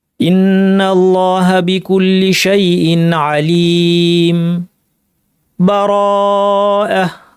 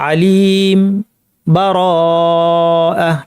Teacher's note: সাক্ত করলে আমরা এখানে বিরতিটা ওয়াকফের চেয়ে কম পরিমাণ দিব এবং নিঃশ্বাস আদান প্রদান করব না